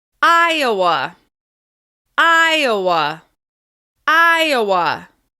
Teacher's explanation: We stress Iowa on the first syllable